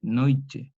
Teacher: esta yod también palataliza la consonante T y la transforma en una che después de varias etapas. Una che, noiche.